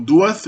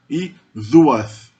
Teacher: Uma oclusiva alveolar como D vira uma fricativa alvéolo dental como the. Então, duath, escuridão, vira i duath. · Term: lenição